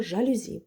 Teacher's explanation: Перші два склади ненаголошені, а останній склад наголошений, тому що на нього падає наголос.